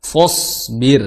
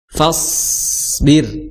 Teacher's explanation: Karena sod mentang-mentang dia tebal, akhirnya fa-nya ikut tebal.